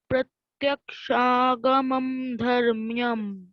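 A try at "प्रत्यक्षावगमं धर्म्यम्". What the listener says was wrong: Pratyakshava is there, no? VA.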